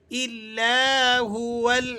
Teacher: الا ہو، یہ وقف کی صورت میں ہے، اور اگر آپ یہاں وقف نہیں کرتے بلکہ اسے آگے ملا کر پڑھنا چاہتے ہیں تو پھر واو کو آپ لام سے ملا کر پڑھیں گے، اور حمزہ کو یہاں سائلنٹ کر دیا جائے گا